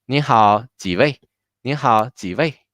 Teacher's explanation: So together will be 你好,几位?你好,几位? So 几位 with stress, within 几位, 位 has more stress.